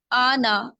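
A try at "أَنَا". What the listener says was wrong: इसमें अलिफ को ना, अलिफ को नहीं खींचेंगे, ठीक है? अलिफ के ऊपर सिर्फ एक हरकत है, तो उसको हल्का सा पढ़ते हैं आ नहीं पढ़ते, ठीक है? तो इसको पढ़ेंगे अना, बस अना।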